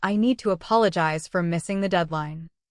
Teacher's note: Reduce to in a natural phrase such as "I need to apologize for missing the deadline." The main stress belongs on need and apologize, while to stays light.